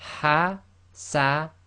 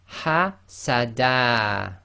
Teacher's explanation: So you're left with, in this case, the dal with fatha. So instead of dan, you have da, just fatha, and you've still got the alif. Because of that, you read it as hasada. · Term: stopping on fathatain